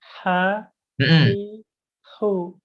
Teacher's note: Coba tenggorokan bawah. Kalau hi itu tenggorokan tengah.